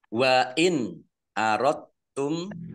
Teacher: nun sukun bertemu dengan huruf alif, bacaan izhar, dibaca jelas